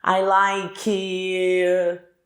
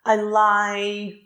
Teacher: Percebam que eu alonguei o I. O K continua mudo.